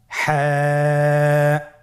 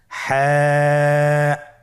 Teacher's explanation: হা হরফটি উচ্চারিত হবে কণ্ঠনালীর মধ্যখান হতে। গলা চিপে ধরে আপনি উচ্চারণ করুন।